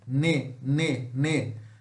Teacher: ne é um alveolar nasal